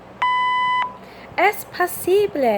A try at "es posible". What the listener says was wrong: Es posible. Yes, but I want to hear the ble.